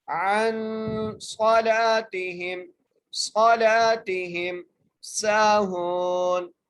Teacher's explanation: جو ہے یہ حروف حلقی میں سے نہیں ہے، اس لیے نون ساکن پر ہم غنہ کرتے ہوئے پڑھیں گے